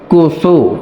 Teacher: ফায়ে পরিপূর্ণ বাতাস জারি রাখতে হবে